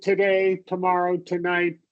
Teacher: All of those that second syllable gets the stress and that two at the beginning is just basically t.